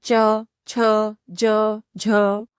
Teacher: तालु से होता है, इसलिए इन्हें तालव्यः वर्ण भी कहा जाता है। इन्हें बोलते समय जीवा का यानी जीभ का बीच वाला हिस्सा ऊपर के तालु को टच करता है